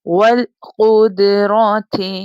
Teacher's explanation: والقدرات، واو لام زبر غل، قاف موٹی ہے، یہاں پر اپنے لپس کو گول بنائیے گا جب قاف کو ادا کریے گا